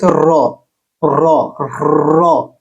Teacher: এটি একটি কম্পিত অক্ষর যার উচ্চারণে হালকা কম্পন হয়।